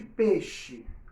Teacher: na transcrição fonética, no nosso modo de falar, né, a gente acaba não pronunciando o i muitas vezes